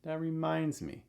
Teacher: Reminds is going to have the stress. So reminds has the stress, me has a falling intonation